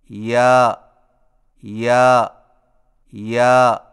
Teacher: یا کی ادائیگی میں زبان کے درمیان کو تالو کی طرف بلند کرتے ہوئے باریک آواز میں پڑھیں